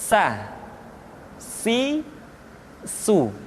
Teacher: Diucapkan sebagaimana kita mengucapkan huruf sa, yaitu ujung lidah di antara dua gigi seri kita